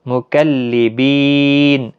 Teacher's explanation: 3 سے 5 الف کی برابر کھینچ کر وقف کیا